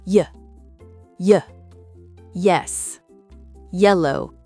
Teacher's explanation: Les glides. Ces sons sont très brefs et glissent immédiatement vers la voyelle.